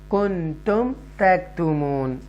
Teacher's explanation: یہاں پر اظہار شفوی کرنا ہے آپ نے کیونکہ میم ساکنہ کے بعد تا آ رہا ہے تو کلیئر ہم پڑھیں گے